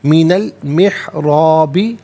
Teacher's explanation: محرابی میں را پر زبر، را کو پر کر کے پڑھا جائے گا